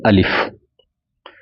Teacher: حلق کی خالی جگہ سے الف ادا ہوتا ہے